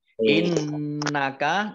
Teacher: nun tasdid dibaca gunah atau mendengung, ditahan 2 harokat